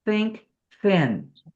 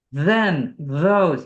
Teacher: So instead of, because many languages do not have the TH sound. The unvoiced is think, thin. But the voiced is like then, those. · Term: TH unvoiced and voiced